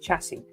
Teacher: The last S is silent. So it's pronounced chassis. And chassis, if you pronounce the S, then it's plural.